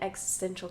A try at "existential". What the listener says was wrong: No, but it's okay. Existential. You don't pronounce the T. Existential. Existential. just say like X and then essential. X-essential. Existential.